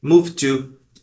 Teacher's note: como eles têm os sons bem parecidos a gente só vai dizer o som do T